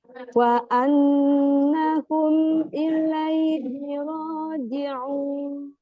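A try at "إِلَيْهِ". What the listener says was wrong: Ini baca ilaihi ada sedikit bunyi L-nya masuk ke I. Jadi gini. Ada kayak harusnya ilaihi bersih, ini jadi ilaihi, ini nggak boleh. Jadi nggak boleh ilaihi tapi ilaihi.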